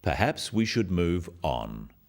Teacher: This falling intonation makes it a more definite statement rather than a suggestion. · it is said in a firm way with a falling intonation at the end.